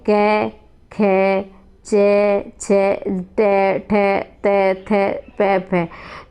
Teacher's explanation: वे वर्ण जिनके उच्चारण में गूंज, नाद, कंपन नहीं होता है उसे अघोष वर्ण कहते हैं।